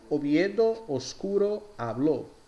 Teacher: La O siempre se pronuncia cerrada, es decir, O, jamás O.